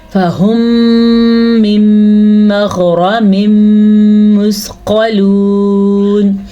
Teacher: یہ ادغام بالغنہ کا تھا اور یہ ادغام شفوی کا تھا، یعنی کہ یہاں پہ بھی ملانا ہے، دونوں ہونٹوں سے ملا کے پڑھنا ہے، تو خود بخود غنے کی کیفیت پیدا ہو جائے گی